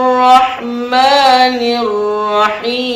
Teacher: lamnya ditiadakan masuk ke dalam huruf ro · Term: alif lam syamsiah